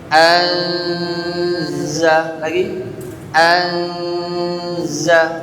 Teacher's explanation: Anza, suara masih an tapi tertahan sebentar. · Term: dengung